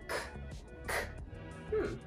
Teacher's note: Let me contrast it with another velar sound, like k, k. I don't feel as much vibration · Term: voiceless sound